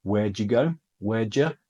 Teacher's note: do you becomes j, did you becomes j